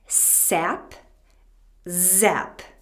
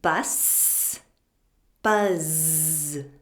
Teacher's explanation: do you hear how loud the voiced z sound is compared to the voiceless s sound